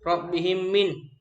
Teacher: Suatu bacaan dikatakan idgham mimi apabila mim mati bertemu dengan huruf mim. Cara melafalkan bacaan tersebut adalah dengan membaca huruf mim rangkap secara mendengung.